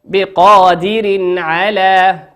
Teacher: تنوين أتى بعده حرف العين، وقلنا حرف العين من حروف الإظهار تظهر كما هي